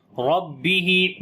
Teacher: با کے اوپر شد ہے، تھوڑا سٹرونگ کر کے اور آواز کو روک کر پڑھیں گے